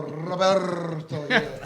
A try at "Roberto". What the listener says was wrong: Roberto. Yeah, you gotta roll that R, something serious. You gotta roll it.